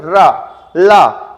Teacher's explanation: जब ला का उच्चारण करेंगे, रा का उच्चारण करेंगे तो जिह्वा हमेशा दंत मूल पर ही लगती है, तो इसलिए रा और ला क्या होते हैं, रा और ला आपके दंत मूल से उच्चारित होते हैं।